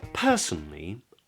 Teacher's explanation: tip of the tongue comes up to make an N now the a after the N is not pronounced in the UK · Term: elide that a